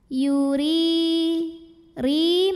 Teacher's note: huruf ro dibunyikan secara tarqiq ya karena barisnya di bawah bacanya tipis